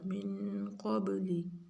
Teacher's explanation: من کے نون پہ غنہ اور قب با پہ قلقلہ، قاف کو موٹا با پہ قلقلہ